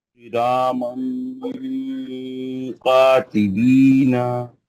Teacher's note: जबान को नीचे पकड़ो, आवाज को नाक में लाओ, गुन्ना करो। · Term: तन्वीन का इख्फा